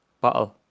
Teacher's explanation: the glottal stop, like in this word, pronounced bottle, features in modern British English but not present in Irish English or Gaelic.